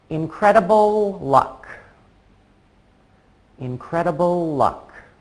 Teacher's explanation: I don't actually have to stop making the L sound at the end of incredible. I just say incredible luck, keeping my tongue in the same place.